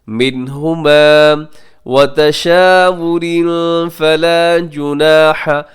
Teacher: نون ساکن کے بعد ہا, یہاں اظہار کیجیے گا کیونکہ ہا حروف حلقی ہے